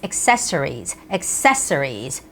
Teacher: in Korean we say accessory accessory but English its accessories accessories so the stress has to go on the second syllable